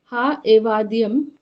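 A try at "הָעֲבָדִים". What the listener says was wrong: No, ma'am. You are trying to pronounce this ayin. Ayin is silent. So ha, va, dim.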